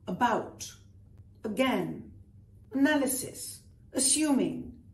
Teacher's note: All of these have what we call the schwa, which means the very unaccented A.